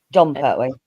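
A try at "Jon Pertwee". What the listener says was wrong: No, Jean. It's pronounced Jean. Yes, not John. Jean. Jean, as in like French. Jean.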